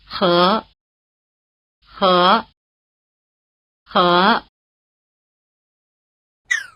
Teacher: it's fine to think of it like an English H but it's noticeably rougher